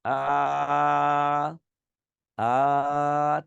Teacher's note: জিহ্বাটা ঠিক মাঝখানে থাকে, আ, আ, ঠিক মাঝখানে থাকে, এটাকে বলি মধ্য স্বরধ্বনি